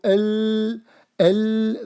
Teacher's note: If you do l, the sound is running from the left and the right of your tongue. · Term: deviation